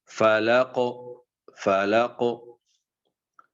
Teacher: کتب جد میں سے کسی حرف پر وقف کیا جائے تو وقفاً قلقلہ کی آواز کو خوب ظاہر کر کے پڑھا جائے گا تاکہ قلقلہ جو ہے وہ واضح ہو جائے